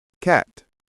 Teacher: The C is a little sharper, made with the back of your tongue touching the top of your mouth.